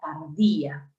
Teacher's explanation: Tardía tiene un hiato acentual, porque el acento está en la vocal I, no en la abierta A.